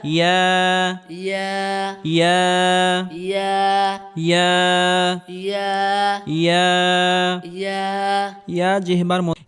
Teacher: ইয়া হরফটি জিহ্বার মধ্যখান উপরের তালুর সঙ্গে লাগিয়ে উচ্চারণ করতে হবে